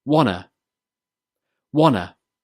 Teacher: the t sound in want and in to is removed, then the words are joined together to make wanna.